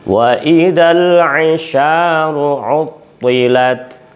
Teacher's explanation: To itu dibaca tebal walaupun kasroh harus kelihatan tebalnya